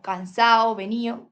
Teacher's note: La vocalización de la D intervocálica, como cansado, venido, o sea, que se quita.